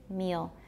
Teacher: a dark L, especially after front vowels, has a little schwa before it, sometimes.